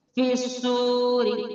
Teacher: پیش واو مدہ ایک الف کی مقدار کھینچ کر پڑھیں گے، حرف سواد حروف مستعلیہ پورا اور موٹا بھی پڑھیں گے